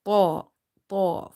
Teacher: Tip of your tongue is touching the top teeth.